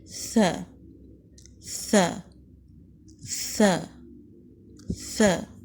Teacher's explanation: زبان کی نوک سامنے کے اوپر کے 2 دانتوں کے سرے یعنی کنارے سے لگے گی اور ذرا باہر کو نکلے گی۔ ثا حروف ہمس میں سے ہے، یعنی مخرج پر جانے کے بعد ہوا جاری رہتی ہے۔